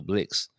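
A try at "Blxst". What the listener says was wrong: you don't pronounce the X you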